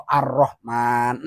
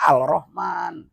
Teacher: Kalau alif lam samsiah itu lamnya tidak dibaca. Tandanya sesudah lam ataupun di hadapan huruf lam ada huruf musadah ataupun tasdid.